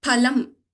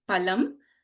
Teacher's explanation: So if you see the examples listed here in the screen below, palum means fruit. You can notice this p the first letter of palum is pronounced with more effort. And if you look at this the next uh column palam here we do not put the effort to pronounce the letter palam but the meaning of palam is meat.